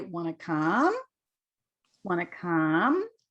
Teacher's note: that's the question when our voice goes up